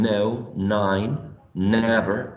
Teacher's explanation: It is an alveolar sound. The tip of the tongue is right here, touching the gum or ridge, right? It is a stop, right? · Because we're stopping the air. In terms of nasality, it is nasal, definitely, because the velum is down here, and it is voiced.